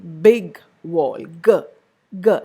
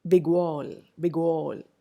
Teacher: when g comes in the close vicinity of a lip rounded sound, like w, for example, you notice that the lip position of g changes